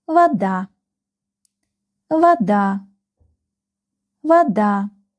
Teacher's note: this O is not stressed, so we read it like almost A.